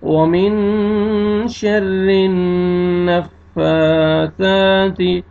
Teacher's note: نون مشدد ہے، نون پہ غنہ کریں گے، ناک میں آواز لے کے جائیں گے. ومن شر النفاثات.